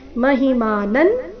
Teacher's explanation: ಅನುಸ್ವಾರದ ಉಚ್ಚಾರಣೆ ನ ಇಲ್ಲಿ